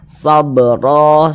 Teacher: baca fathah atau fathatain maka huruf ro itu dibaca tkhimah sehingga pangkal lisan kita naik terangkat ke atas ketika Kita mengucapkannya